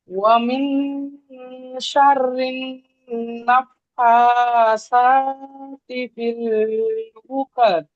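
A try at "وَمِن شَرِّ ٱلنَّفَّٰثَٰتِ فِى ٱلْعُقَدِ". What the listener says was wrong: ফিল উকাদ, লাস্টে দালটা কলকলা করবেন, উকাদ।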